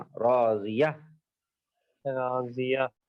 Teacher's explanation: گول تا پہ اگر رکنا ہے راضیہ تو راضیہ آخر میں ہا کی آواز آنا